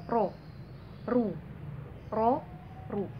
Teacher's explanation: Cara bacanya itu teman-teman harus monyong. Ro karena dia tebal jadi dia harus monyong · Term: ro tafkhim